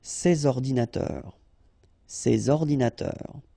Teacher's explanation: you should make the liaison between s and o